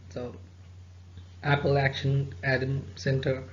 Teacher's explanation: So apple, we have two syllables. The stress is on the first syllable.